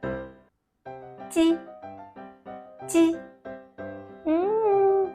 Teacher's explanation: If you tried already your smile face and you still find out your tongue is not touching the hard palate, then please you adjust by yourself. Make your tongue touch the hard palate. Use the weaker airflow to rush out of the obstruction.